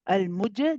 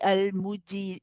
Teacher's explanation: be careful not to start getting ready for the kasra and the e sound too early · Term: qalqala